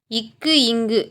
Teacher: நாவின் முதற் பகுதி அன்னத்தின் அடிப்பகுதியை பொருந்துவதால் பிறக்கின்றன